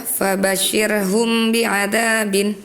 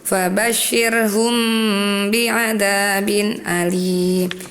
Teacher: ketika ada huruf mim bertemu ba harus ditahan ya dua harakat disertai dengan gunnah ada dengungnya sedikit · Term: syafawi, ihfa safawi